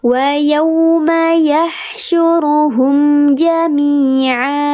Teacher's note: Ya sukun sebelumnya harakatnya kasrah, dibacanya panjang dua harakat, namanya mad tabi'i.